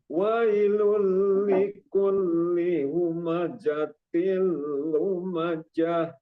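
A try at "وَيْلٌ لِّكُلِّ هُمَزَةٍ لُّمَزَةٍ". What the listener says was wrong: Itu bukan huruf jim ya. Tadi yang kita sebut itu zai. Wailul likulli humazatil lumazah. Wailul likulli humazatil lumazah. Jadi bukan jim. Kalau dibacanya wailul likulli humajatil lumajah itu jim. Tapi ini zai. Wailul likulli humazatil lumazah. Zah ya. Zazizu az.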